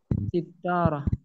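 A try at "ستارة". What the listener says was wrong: sitarah ya. Taknya tidak sukun. Maksudnya taknya tidak tasydid. Sitarah langsung. Sitarah.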